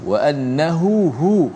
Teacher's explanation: dua ha, yang di tengah tu ada mad, mad dua harakat. Wa annahu huwa, dijelaskan dua-dua ha kat situ.